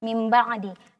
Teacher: iqlab itu adalah mengganti kita ganti dengan bunyi seolah-olah dia mim Tapi mimnya Tidak jelas kalau mimnya makhraj mim itu kan syafatain dua bibir dibaca dengan